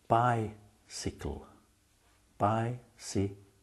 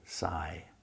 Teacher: the first syllable by you have the long I sound by in the second syllable C the Y is short you don't say Sai you say see